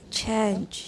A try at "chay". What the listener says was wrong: No, you're thinking about the nasal. 那个 nasal 把它忘掉. Chay. Stop speaking English, first of all, and then stop thinking about the nasal. 后面的根本就忘掉. 只有 ch, a, e, right? Ch, a, e. That's what I want you to say.